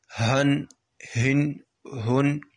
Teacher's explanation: اس کو نچلے حرف سے، یعنی کہ جو ہمارا حلق کا نچلا حصہ ہے وہاں سے ادا ہوگا یہ ہا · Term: حلق والا حرف